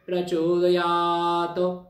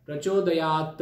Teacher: प्रचोदयात असा त ओढायचा नाही, लांबवायचा नाही, कारण की तो तकार जो आहे तो हलंत आहे.